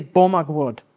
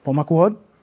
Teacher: the stress is on the first syllable and a slight lilt up on the last one